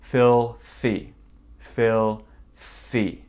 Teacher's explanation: Et on a le premier son TH, avec beaucoup de souffle.